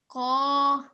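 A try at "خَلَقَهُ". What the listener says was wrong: Okay, but remember that the letter Qaf only has a simple fatha on it. So we're only pronouncing it for 1 second. Qa.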